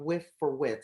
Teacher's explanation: the voiceless th sound becomes an f or a t